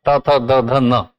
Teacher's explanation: आपकी जीभ दांत को टच करती है। इन सबको बोलते समय त, थ, द, ध न।